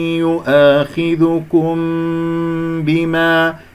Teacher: ميم مع الباء إخفاء شفوي من غير كز يكون صوت لطيف جدا لكي لا يصير مشوه، بما عقدتم الأيمان، لا تقول بما عقدتم،